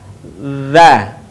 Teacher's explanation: Suara mengalir dengan lembut tanpa diiringi dengan mengalirnya udara. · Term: huruf dha